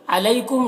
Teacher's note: अलैकुम यहाँ पर या लीन है, इसे नर्म आवाज़ के साथ जल्द पढ़ेंगे।